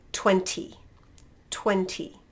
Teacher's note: you can say it firstly in a little bit more british way with a proper t